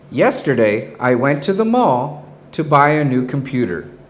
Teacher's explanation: did you hear the rising inflection when I said to the mall and I used a falling inflection to finish the thought to buy a new computer · I will add a rising inflection which will tell the listener that I still have something more to say